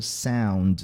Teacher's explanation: Sound que é mais nasalado do que a gente fala em português